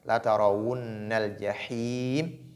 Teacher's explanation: La tarawunna, nun porte shadda, donc il faut faire la nasalisation.